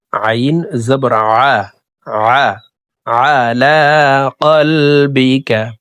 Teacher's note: হলকের মধ্যখান থেকে আইন হরফকে উচ্চারণ করে পড়ব